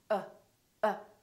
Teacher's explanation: my lips are neutral uh they're not doing very much and my tongue is also neutral in the back uh uh everything is relaxed there's hardly any movement in my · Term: the neutral sound